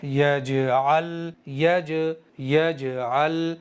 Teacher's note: जबान रुक नहीं रही है, लगते ही फौरन अलग हट रही है जीम के मखरज से। लाम पर भी सुकून है, लेकिन लाम पर कलकला नहीं होगा, इसलिए कि लाम कलकला के इन 5 हरफों में से है ही नहीं।